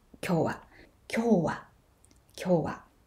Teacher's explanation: but it's a tamadaka word so it starts high and moves low